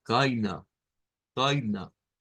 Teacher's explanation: tiene ese diptongo Pero además tiene el sonido del shua que se vuelve muy característico también en el idioma alemán